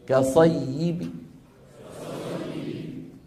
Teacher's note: نحذف التنوين ونقف ببعض الكسره